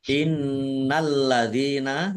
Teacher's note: nun tasdid dibaca hunah atau mendengung ditahan biar tampak dengungannya. Lamnya dibaca double ada tasdidnya.